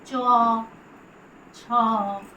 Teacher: জিভের ডগা তালুতে স্পর্শ করে উচ্চারিত হয় চ, ছ, বর্গীয় জ, ঝ, ইয়। তাই জন্যে এদের নাম তালব্য বর্ণ।